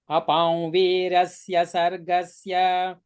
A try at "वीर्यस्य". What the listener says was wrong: Virasya, did you say virasya? Did you say virasya? It's viryasya.